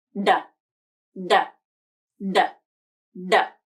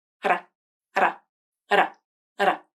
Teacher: The flap is a lighter D sound, lighter and faster. · The tongue tip touches the alveolar ridge, and it's a quick movement, just long enough to make contact, but not long enough to fully stop the airflow. The flap is voiced, meaning the vocal cords vibrate. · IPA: /ɾ/, ɾ